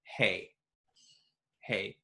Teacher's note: an American would pronounce it hey, hey, on one syllable, one motion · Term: diphthongs